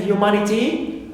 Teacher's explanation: Also T like in humanity, T not stressed, ni not stressed, and ma, third one, anti-penultimate is stressed.